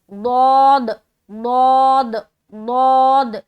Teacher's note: ज़बान का बगली किनारा करवट लेते हुए ऊपर की दाढ़ की तरफ हम टच करते हैं। · दौद की अदायगी मोटे तरीके से, क्यों? क्योंकि इसके अंदर जो है ना हरूफ मुस्तालिया पाई जाती है। ये हर्फ हरूफ मुस्तालिया के अंदर आता है।